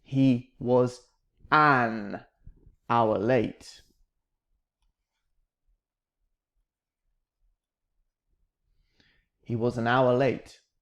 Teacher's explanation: we have a letter h but listen to the word it sounds like another ah sound doesn't it it sounds like a vowel sound